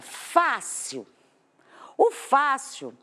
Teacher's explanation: O fácil, se eu separar as sílabas, eu tenho isso aqui, ó, a última sílaba e a penúltima sílaba. Essa penúltima é a mais forte. Eu tenho o Fá, do fácil mais forte. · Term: paroxítona